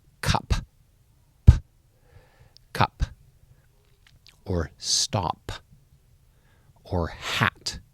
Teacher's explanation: all of these are voiceless sounds they don't make a vibration on that last consonant sound and if the last consonant sound doesn't make a vibration then